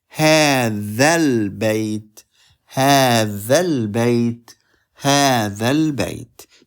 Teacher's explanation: We jump from the dal to the lam, and we don't pronounce both alif and alif.